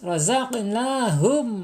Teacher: Mim syafawi bibir, idharnya jelas. Mimnya dibaca jelas gitu. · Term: idhar syafawi